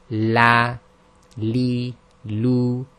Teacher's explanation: So it's like the English letter L, but it says here the entire front of the tongue presses against the upper front gums. Okay, so if we look at that image at the bottom with the blue squares, it's showing that's the pressure point. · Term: lam